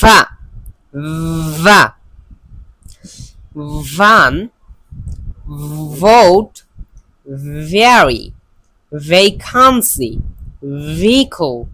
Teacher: কিন্তু এটা অবশ্যই যেন এইভাবে উচ্চারণ হয়, না হলে কিন্তু এই যে ফা, এটা কিন্তু আগের ফার উচ্চারণ হয়ে যাবে, তখন কিন্তু অর্থ ভিন্ন হয়ে যেতে পারে। এবং এই ভা এটা বলার সময় অবশ্যই একটু ভাইব্রেশন করবেন · এইটা একটু উচ্চারণের সময় একটু ভাইব্রেশন করে পড়তে হবে, মানে আমাদের উপরের দুইটা দাঁত নিচের ঠোঁটের সাথে লাগা একটু ভাইব্রেশন হবে